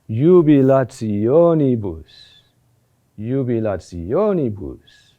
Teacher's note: there's a first phase of increase which terminates with the summit at the tonic accent and then afterwards of falling away a decrease · The accent is on O.